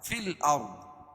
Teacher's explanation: الف لام کے بعد حروف قمری کے 14 حرفوں میں سے حمزہ ہے تو یہاں لام پڑھی جائے گی. ارض، رائے ساکنہ سے پہلے ذریعہ پیش ہو تو را کو پور پڑھیں گے اور ضاد کو موٹا پڑھیں گے کیونکہ حروف مستعلیہ میں سے ہے.